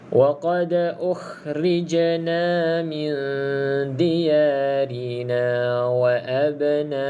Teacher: pastikan jim ada lantunan sebab qalqalah